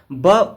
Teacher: ओष्ठ अल्पप्राण तथा घोष वर्ण का उदाहरण है